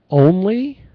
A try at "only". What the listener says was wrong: When you said it earlier, it was a little short. Like the O, make sure you hit the O long enough.